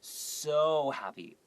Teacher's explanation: 你 会 把 那 个 so 拉 很 长， 就 是 来 强 调 那 个 形 容 词 的 意 思。